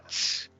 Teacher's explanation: the tsare is always like a T and an S together